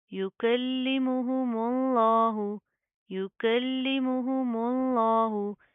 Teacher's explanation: मीम बरीक, लफ्ज़ अल्लाह का लाम मोटा